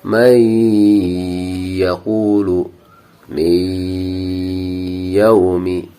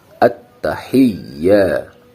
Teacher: Harus ada dengungnya, harus ada masuk di hidung. Beda dengan ya tasdid biasa.